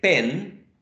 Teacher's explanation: it's nasal because part of the airflow goes through the nose or nasal cavity